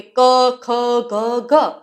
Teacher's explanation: ક ખ ગ ઘ, ફક્ત ગળામાંથી જ અવાજ આવે છે